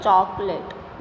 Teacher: और इसका साउंड भी इसी तरह से होता है, चॉकलेट, ना ओ का साउंड होता है ना आ का, ये मध्य का साउंड होता है